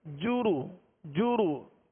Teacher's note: جیم اور را پر پیش ہے، پیش کو بغیر کھینچے بغیر جھٹکا دیے معروف پڑھیں گے، ہونٹوں کو گول کر کے